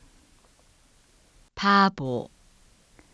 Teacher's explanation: 비읍 소리가 유성음 사이에 나타나면 유성음화가 됩니다. 똑같은 비읍 소리이지만 유성음 사이에 있을 때 음성적으로 다르게 실현이 되는 것을 볼 수 있습니다.